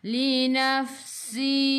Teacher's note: Ingat huruf fa sifat hurufnya hamas, kena ada angin. Linafsi. Si 2 harakat ada ya mad asli.